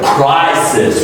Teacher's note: The first one is more stressed, and you're going to stretch it more and more, and it sounds like a crisis.